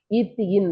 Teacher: நாவின் நுனி மேல்வாய் பல்லின் வேர்பகுதி